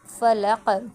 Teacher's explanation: اس میں قاف جو ہے وہ باریک پڑھا جائے گا، اور قاف کا جو جب ہم اس پہ وقف کریں گے تو اس پہ قلقلہ کریں گے، یعنی کیسے پڑھیں گے، فلق، ٹھیک ہے۔